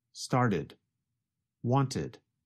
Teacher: With the first examples, the verbs started and wanted, you can hear the extra syllable id.